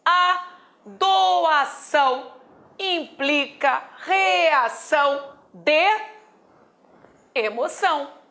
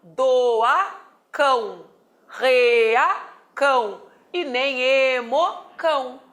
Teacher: esse C não poderá ser pronunciado nem com o som do C, nem com o som do K, mas com o som da dobra do S